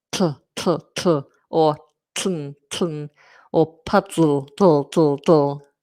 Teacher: It's where you keep the tip of the tongue up on the alveolar ridge and sound explodes out of the side. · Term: lateral plosives